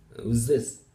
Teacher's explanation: the s is the cause of that th to turn out like some sort of a z sound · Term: progressive assimilation